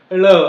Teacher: ळ म्हणत असताना जीभ पाठीमागे जाते आणि ते मागचे जे आपल्या टाळूच्या पाठीमागे थोडसं जिथे टच होते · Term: मूर्धन्य